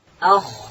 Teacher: خا ادا کیږي د ستوني په سر کښي